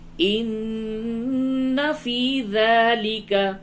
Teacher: نون مشدد ہے، غنہ کیجئے